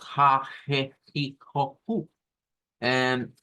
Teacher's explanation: recurran a pronunciar una H expirada que es como una J para nosotros